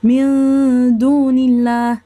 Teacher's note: مثال من دون الله، هنا الدال حرف مفخم، يعني نقوله من دون الله، كتغير شي شوية الغنة كتكون مفخمة شي شوية